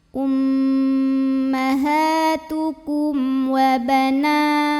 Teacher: Berikutnya ada hukum izhar syafawi karena ada mim sukun yang menghadapi huruf selain mim dan ba, yaitu huruf waw. Maka mim sukun ini kita bunyikan dengan izhar, jelas bunyi M-nya.